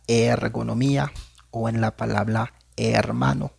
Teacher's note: En este caso va a escuchar un poco más grave la e. En este caso se escucharía como e, como en la palabra ergonomía o en la palabra hermano, por ejemplo. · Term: acento grave